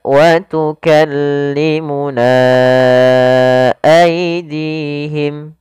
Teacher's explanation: apabila ada mad tabi'i datang setelahnya hamzah dan hamzah tersebut di lain kata, maka kita namakan dengan mad jaiz munfasil, kita panjangkan sepanjang 4 harakat atau 5 harakat